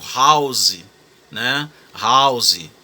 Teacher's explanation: Mas você quase não fala o h né é um h bem aspirado